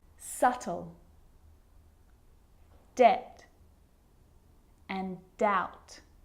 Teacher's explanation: my lips aren't closing and coming together to form the B sound. I'm just pronouncing the T.